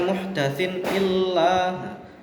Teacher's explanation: Selanjutnya muhdatsin illah, di sini ada harokat kasroh ten bertemu dengan hamzah, maka dinamakan idhar, idhar halqi, bacanya harus jelas